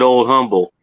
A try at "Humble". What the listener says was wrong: It's not humble. It's humble. There's no the H is silent. Everyone around here calls it humble. They don't call it humble. The H is silent for some reason.